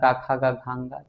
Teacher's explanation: क वर्ग का उच्चारण कंठ से होता है